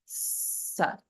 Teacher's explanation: the regular sa that we see in the name like Saraswati or Sagara, that's a dental sa